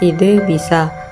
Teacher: E, agak tinggi tak bulat